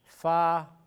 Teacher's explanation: The edges of your upper incisors when it touches the wet area of the bottom lip.